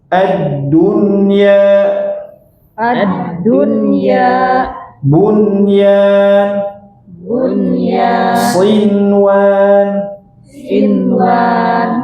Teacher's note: Tapi kalau dunya tidak terjadi idgham, tetap dibaca dun dun ya. Tidak addunya jangan. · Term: izhar mutlak